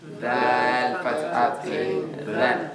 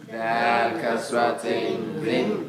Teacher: Where does the dhal come from? Same makhraj as the tha. The, between the top and bottom teeth.